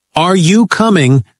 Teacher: yes, no questions like, are you coming, lift up at the end.